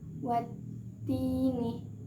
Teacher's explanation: Jadi cara membacanya, alif lam tersebut tidak dibaca dengan jelas, melainkan langsung diidghamkan ke dalam huruf ta. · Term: idgham syamsiyah